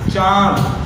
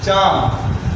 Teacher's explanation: चांद जब बोलेंगे आप तो देखेंगे आपका नाक और मुंह दोनों पर प्रेशर पड़ेगा, जो वहाँ से हवाएं निकलती हैं आपको अनुभव होगा जब आप बोलेंगे चांद।